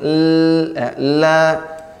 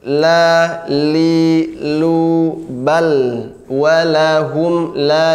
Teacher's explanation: karena lidahnya terangkat maka suara akan ke samping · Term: inhiraf